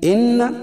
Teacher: ان نون مشدد اس میں غنہ ہوگا